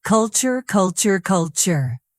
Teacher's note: Stress the first syllable.